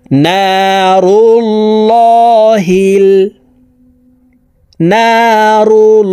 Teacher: এখানে আল্লাহ শব্দের আগের হরফে পেশ আসছে এই কারণে এই লামকে ল বলে অর্থাৎ মোটাভাবে পড়তে হবে